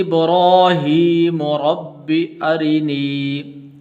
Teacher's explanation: را کے نیچے زیر ہے تو اس لیے اس کو باریک کر کے پڑھیں گے